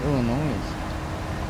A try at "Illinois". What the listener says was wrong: just heads up, it's Illinois, not Illinois. The S is silent.